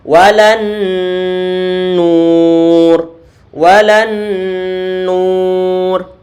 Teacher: Gunnah yang paling sempurna. Dari segi apa? Dari segi lama penahanan suara dengungannya.